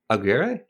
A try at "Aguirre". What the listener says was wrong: You got to roll that R. Aguirre.